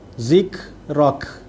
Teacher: dua huruf kaf yang mati, kedua-duanya bersifat hamas, kena ada desiran